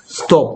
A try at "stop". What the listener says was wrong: 같은데, 네가 한건 영국식 발음 같은데 stop. 오케이, O가 가진 네 가지 소리 오, 오, 아, 어. 그래서 영국 사람들은, 미국 사람들은, 그래서 미국 사람들 발음은 뭐다? stop. 영국 사람들 발음은 stop. Stop.